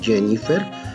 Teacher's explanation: como por contaminación del inglés, la J se pronuncia como Y